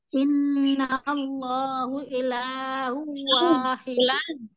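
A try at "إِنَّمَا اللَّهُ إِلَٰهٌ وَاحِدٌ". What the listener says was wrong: Bukan inna Allah, innamallah. Innamallahu ilahu wahid. Pada kata hu, di situ ada tanwin ketemu waw, itu rombi guna tahan dengan guna akmal.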